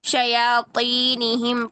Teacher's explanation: طا جو ہے نا اس میں ڈبل موٹائی ہے، استعلاء اور اطباق